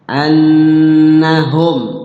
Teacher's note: ketemu huruf selain huruf ba gitu mim selain huruf ba itu izhar syafawi dibaca jelas di bibir